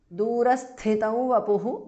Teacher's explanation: Durasthitam vapuhu, because of Sandhi. Anuswara changes to the nasal of va.